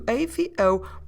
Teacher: with an acute accent which means an accent to the right that accent tells us please open the vowel and open the vowel means open the mouth